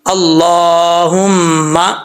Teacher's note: میم کے اوپر شد ہے, غنہ کریں گے